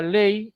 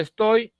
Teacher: primero inicia la vocal abierta y luego pasa a la vocal cerrada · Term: diptongo descendente